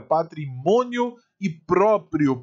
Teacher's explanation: Penúltima sílaba mais forte, aqui também, e no finalzinho ditongo crescente. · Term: paroxítonas